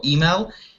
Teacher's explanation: Stress the word on the first syllable, email.